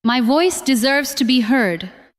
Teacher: This time, do not make every word equally strong. Stress voice, deserves, and heard.